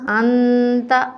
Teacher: اب یہاں نون ساکن ہے اور اس کے بعد حروف حلقی میں سے کوئی حرف نہیں ہے تو یہاں ہم نون ساکن کے اوپر غنہ کریں گے